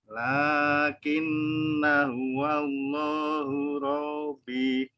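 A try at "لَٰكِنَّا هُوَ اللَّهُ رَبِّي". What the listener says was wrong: Robbi, tekan baknya, ada tanda tasdid. Robbi.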